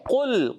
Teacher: قاف موٹا رکھنا ہے، لام کو ہلانا نہیں، لام باریک